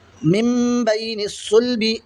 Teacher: तो नून की आवाज़ नहीं पढ़ेंगे बल्कि मीम से मिलाकर पढ़ेंगे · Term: इक़लाब